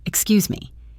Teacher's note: You hold that S sound just a little bit, letting it glide right into the M of me.